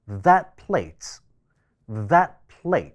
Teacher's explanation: t▁會受到下一個單詞首音▁p▁嘅影響，▁t▁音會變成▁p